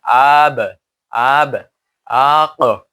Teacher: কলকলা নাড়া দেওয়া একটা ইকো সৃষ্টি করবে